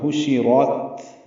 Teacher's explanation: آگے پھر حشرت میں پیش آئی، ہا وسط حلق سے ادا ہوگا، را پر پڑھیں گے اور تا ساکن پہ ہمس ہوگا، حشرت، رت پڑھیں گے۔